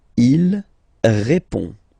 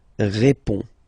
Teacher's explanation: final D is not pronounced. You only have this on nasal sound at the end.